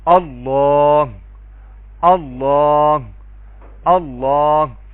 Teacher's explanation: اللہ کے لام کو لام جلالہ کہتے ہیں، اور اللہ کے لام سے پہلے زبر یا پیش آ جائے تو اللہ کے لام کو ہم پر کر کے پڑھیں گے، موٹا کر کے پڑھیں گے